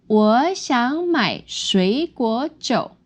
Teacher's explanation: Now we can see that it goes up and down and up and down.